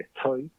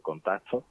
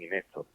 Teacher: Esta T aspirada, digamos, de estoy, también puede ocurrir no solo cuando hay una S antes, sino también cualquier consonante.